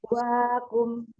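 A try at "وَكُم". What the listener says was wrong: Yuk, kafnya jangan terlalu ke belakang. Jangan terlalu ke belakang kafnya, agak depanan dikit ya tempatnya, titik tumpunya. Kalau ke belakangan dia mirip-mirip sama kof nanti. Sedangkan kaf itu ada hamzahnya ya. Wakum.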